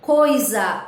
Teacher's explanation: o A teve maior tonicidade e o I menor tonicidade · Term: semivogal